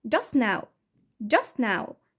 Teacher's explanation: صوت الت ساوند اختفى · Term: elision